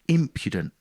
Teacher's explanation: so once i learned that i knew it was imp impudent with the emphasis on the first syllable which you would never guess from reading the word